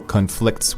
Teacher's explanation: we are putting the stress on the second syllable